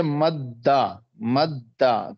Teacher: پہلے دال کا دوسرے دال میں ادغام کر دیا گیا, مدغم مدغم فی ادغام, ادغام کرنا, صحیح ہے.